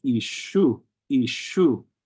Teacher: You would think it's pronounced like the S in English, but really it's more closely to the SH sound, only when it's followed by an E.